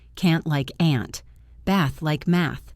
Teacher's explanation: Another difference is the vowel sound in words like can't and bath. In American English, these are flat A sounds.